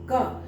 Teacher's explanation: क के साथ पीछे अ भी निकल रहा है